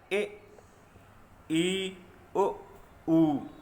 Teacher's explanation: बोलते समय मुख बहुत कम खुलता है, मुख लगभग बंद सा ही रहता है। आप अगर बोल के भी देखोगे तो आपको थोड़ा सा अनुभव होगा कि ये बिल्कुल सही बात है। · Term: संवृत स्वर